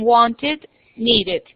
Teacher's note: Solo se pronuncia la E y se convierte casi en una I, es cuando terminan en T y en D.